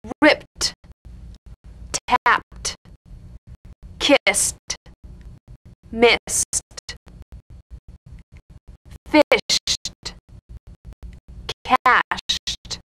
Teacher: Ed endings that are really pronounced as T. First, an unvoiced group.